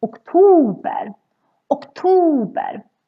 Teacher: So the first O in this word is actually very short because we have two consonants coming after. OKTOBER. Then the second part, ober, that becomes very long because we have just one consonant coming after the O in the second O.